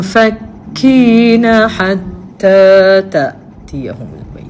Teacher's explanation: dia tak boleh bunyi nun. Dia bunyi dengung aje. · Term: ikhfaul haqqi